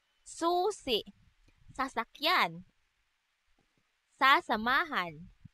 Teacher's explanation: Ang letrang S naman ay walang tunog na isinasaad sa paraan ng pasutsot at sa punto ng panggilagid.